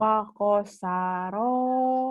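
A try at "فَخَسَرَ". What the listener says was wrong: Sanya panjang. Emang kamu orang Jawa, Pakosaro itu mah ngorok. Khoir. Mang Khoir kan emang Khoir. Pakhosaro. Fakhosaro.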